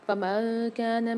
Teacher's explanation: نون ساکن کے بعد کاف آ رہی، منکم میں بھی نون ساکن کے بعد کاف آ رہی، دونوں جگہ غنہ کر کے پڑھیں گے